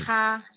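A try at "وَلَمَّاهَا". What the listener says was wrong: Walamahanya tadi agak salah diulang lagi ya. Pendek. Nggak ada yang panjang.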